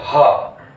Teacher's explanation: फुसफुस हैं जैसे ह तो हवा बाहर की ओर धकेल हैं कंठ से हवा बाहर की ओर धकेल हैं तो ह का उच्चारण होता है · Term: ह ध्वनि